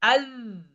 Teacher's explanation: জিব্বার আগাটা একটু দাঁতের সামনের দুই দাঁতটা একটু কামড়াই ধরবে, জিব্বার আগাটা একটু সামনে আল।